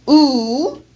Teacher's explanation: notice how high in the back of the mouth the tongue is raised so the tongue is almost touching the pallet at the back of the oral cavity this is therefore a back fowl because the back portion of · to ooh remember our vowel where you look like a fish it's a back vowel with the back portion of the tongue raised